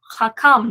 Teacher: two syllables, and the accent would be over the kam. So thus the kam is the tone syllable, the accented syllable.